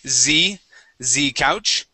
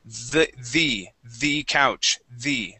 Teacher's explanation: instead of pronouncing a Z there, we want to use a TH sound and say the couch, the. Try that.